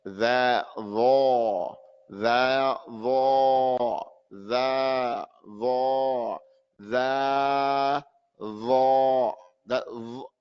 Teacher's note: This is your tongue in dha. You have to raise the back of your tongue. It doesn't go back to the lips.